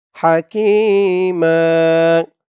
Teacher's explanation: মাকফ করার কারণে মিমের উপরে দুই জবর থেকে এক জবর বাদ হয়ে গেছে এক জবর দিয়ে এক আলিফ টান দিয়ে পড়া হয়েছে